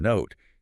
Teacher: >> And for O in note, you glide through an O shape, literally rounding your lips at the end of the sound.